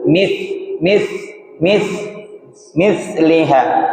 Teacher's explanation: Ujung lidah bertemu ujung gigi seri atas. M m mliha enggak ada suara enggak keluar dia hanya suara nafsanya. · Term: huruf tsu, huruf tsathisu